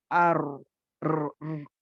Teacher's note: समझिए अब रॉ की आवाज़ में एक तकरीर रहती है, आर, र, नेचुरल यानी उसमें 2 और 3 टाइम्स क्या बोलती हैं उसे तकरीर माने वाइब्रेट होना, ठीक है? ज़बान का वाइब्रेट होना होता है, आवाज़ वाइब्रेट होती है।